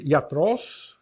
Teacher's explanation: Iatros, reparem, com o acento na última sílaba